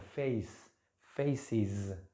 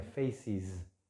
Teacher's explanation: Y por último tenemos la pronunciación de la S, ¿sí? Como una sílaba aparte